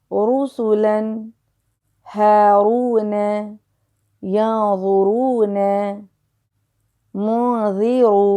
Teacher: جب بھی حرف را پہ پیش آئے، یعنی کہ دمہ آئے، تو ہمیں اس کو موٹا پڑھنا ہے، مفخم پڑھنا ہے، تفخیم کے ساتھ پڑھنا ہے۔